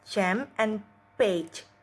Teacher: Air is blocked with a tongue just beyond the alveolar ridge or post-alveolar, then realized as a fricative.